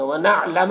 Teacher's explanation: نون میں اخفا اور نون کی آواز کو ناک میں چھپا کر پڑھیں گے